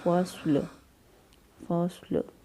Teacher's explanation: صاد جو ہے اس کو پر پڑھیں گے، سیٹی جیسی آواز آنی چاہیے، لیکن ہونٹ جو ہے وہ تمام ہونٹ جو ہے وہ لائن کی صورت میں نہیں چاہیں گے، تو ہم اس کو پڑھیں گے فصل، فصل، مطلب لام جو ہے وقف کی صورت میں ساکن ہو جائے گا۔